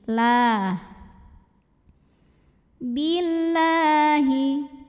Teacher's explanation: Lam pada lafaz Allah dibunyikan secara tarqiq sebab huruf sebelumnya kasrah, maka bacanya tipis.